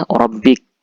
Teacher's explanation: qalqalah sugrah ini kalau ketemu hurufnya maka dibaca memantul dan pelan, ya. Tidak keras. Kalau keras itu qalqalah kubra, ya. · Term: qalqalah sughra